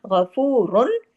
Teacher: गाइन heavy होगा क्योंकि खुस्सा तनकीज में है, रा 2 पेश रुन हैवी भी होगा, और इजहार हल्की भी होगा, क्यों, आगे हरफे हल्की है, हाँ है।